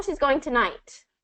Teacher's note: So we're emphasizing tonight